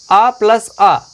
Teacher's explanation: छोटा और बड़ा आ, इनका उच्चारण कंठ से होता है यानी कि गले से होता है।